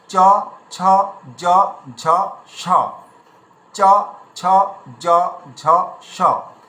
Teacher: এই শয়ের উচ্চারণটা আমাদের কেমনভাবে করতে হবে, এটা তালু দিয়ে করতে হবে।